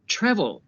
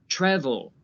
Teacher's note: the first syllable is stressed, the TRA, travel.